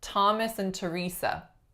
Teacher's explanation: sometimes the letters th actually combine and make an aspirated syllable initial sound